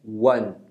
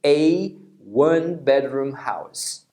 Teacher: Então esse U inicial é como se fosse o som do W da semivogal